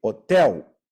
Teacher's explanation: in English h o t e l but we say hotel the age is silent like it is in a lot of words in Portuguese · the L ending a word has a u sound